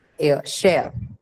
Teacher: There's no r there. It only has two sounds actually. One is the first consonant sound sh, and the second diphthong sound.